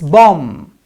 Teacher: if ba sound comes at the end of the word right and m comes before it then we don't pronounce b sound it becomes silent